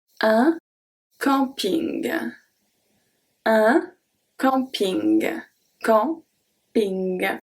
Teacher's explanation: the am we are going to pronounce it en, but the end is still ing